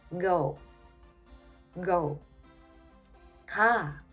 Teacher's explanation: And English G, it's voiced, so your vocal cords vibrate.